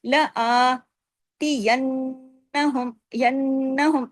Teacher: اوپر دیکھیے کھڑی زبر بھی لگی ہوئی ہے نا، لآتینہم، ینہم، نون پہ غنہ کیا، نون پہ تشدید ہے۔ اچھا، ہم، لآتینہم، ادغام ہو رہا ہے۔